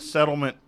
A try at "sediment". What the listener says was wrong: you're saying it wrong you're saying settlement like a lawsuit settlement